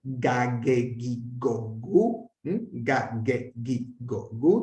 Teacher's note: También siempre oclusiva y no como en griego moderno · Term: gamma